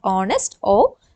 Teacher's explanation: Because H is silent, we begin it with the vowel sound